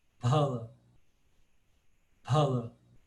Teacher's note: o p com uma aspiração · Agora o som p, com ele aspirado. É exatamente o pá como aspiração.